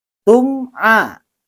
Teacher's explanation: Nah, selanjutnya hukum tajwid yang ada pada ayat ini adalah mim mati bertemu dengan huruf ain. Cara membacanya izhar safawi, yaitu dijelaskan bunyi bacaan mim matinya.